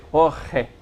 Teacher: It's not R, it's just h. It's a vibrated guttural back of the mouth type H. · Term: chet